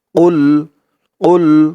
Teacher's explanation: কফের আওয়াজটা গলার ভেতর থেকে বাড়ি খেয়ে আসবে ধাক্কা খেয়ে আসবে